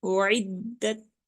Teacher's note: दाब मुशद्दद है इसलिए हम इसको रुक के पढ़ रहे हैं